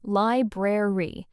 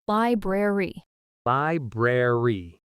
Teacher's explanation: The correct, careful way to say it is li-brar-y, two clear r sounds.